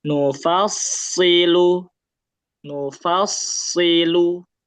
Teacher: dia mengalir jadi agak lama kalau tasdid